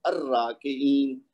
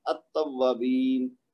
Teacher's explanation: تو یہ جتنے حروف شمسی ہیں ان میں لام کی آواز نہیں آئے گی اور جتنے حروف قمری ہیں ان میں لام کی آواز آئے گی.